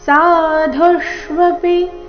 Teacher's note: ಧು ಇಲ್ಲಿ ಮಹಾಪ್ರಾಣ ರಸ್ವ ಆಘಾತ ಬರಬೇಕು